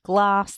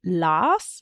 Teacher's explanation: getting rid of k and g sounds in clusters. So instead of glass, they might say las, but that can also just be a developmental thing.